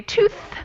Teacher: Yeah, voiceless. So if you put your hand over your throat and you say tooth, you won't feel much vibration at all